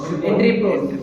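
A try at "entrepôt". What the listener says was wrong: T is silent. Please don't call it as entry port. It is entry port. T is silent.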